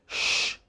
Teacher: tongue is rolled backwards lips are slightly rounded and there is greater pressure on the blade of the tongue